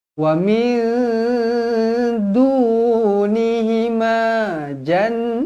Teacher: Nun kosong bertemu dengan Dal ikhfa Hakiki dengung dua harakat · Nun yang bertanda sabdu wajibul gunnah, dengung 2 harakat. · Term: wajibul ghunnah